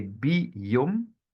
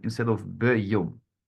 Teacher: When there's a Shiva, those are those two, you hardly see it, like the two little dots on top of each other. When it precedes a Yod, it's read as an Chirik, so an E sound.